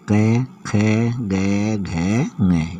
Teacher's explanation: क वर्ग के जो भी व्यंजन है वो कंठ स्पर्श व्यंजन कहलाते हैं।